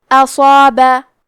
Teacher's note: تو کیونکہ مد الف سے پہلے حرف الصاد ہے تو ہمیں مد الف کو بھی تفخیم سے مطلب بھاری آواز میں ادا کرنا ہے